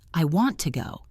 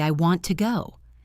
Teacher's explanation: The word to becomes a tiny soft sound almost like a little puff of air. · A robot gives the word to the same power as the word go. A human crushes the word to until it is tiny and quiet. We do not say, I want to go.